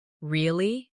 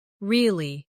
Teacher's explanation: Say, really? With a rising tone to show surprise. Now say, really? With a falling tone to show you don't believe someone.